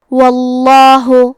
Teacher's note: وَيَغْفِرْ لَكُمْ، کلمت واللہ، یہاں لفظ الجلالہ کے لام کا حکم ہے تفخیم، تو ہم حرف اللام کو موٹی آواز میں پڑھیں گے۔